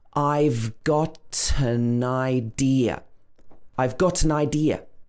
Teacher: It's a reduced pronunciation. Gotten and n and I connect together because this is a consonant plus a vowel